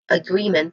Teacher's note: Now the first sound is a schwa sound which means that it is a weak and stressed vowel sound. The primary stress here is on the second syllable g which has a long e sound